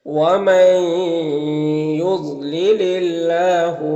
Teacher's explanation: اللہ کے لام سے پہلے لام کے نیچے زیر ہے تو اللہ کے لام کو باریک پڑھیں گے · یہاں پر وقف کی صورت میں مد عارض وقفی ہوگا، دال میں قلقلہ ہوگا · نون ساکن کے بعد یا ہے تو ادغام ناقص ہوگا